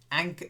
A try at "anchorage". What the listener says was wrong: Not courage. Anchorage. It's an in the middle. Anchorage.